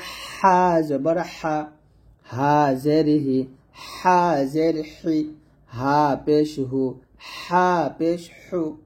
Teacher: এই হাটা গলার মাঝখান থেকে চাপ দিয়ে চিকন করে বলবেন